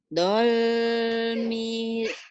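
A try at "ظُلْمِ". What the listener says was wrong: Nah, agak rapuh sedikit, itu bukan do tapi zo ya, ZHO. Zolimina.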